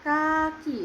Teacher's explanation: bunyi letup velar dengan bagian lidah menyentuh langit-langit belakang pada kata kaki